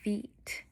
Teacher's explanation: our air flow is a little more constricted due to um our oral cavity being more narrow in the front when we make the "ee" sound.